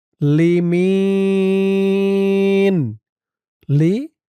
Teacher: অক্ফ করার কারণে জেরের পরে ইয়া সাকিন এক আলিফ টানটা তিন আলিফ হয়ে গেছে